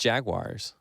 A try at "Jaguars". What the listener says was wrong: But see, you're putting that I in there. Jaguars.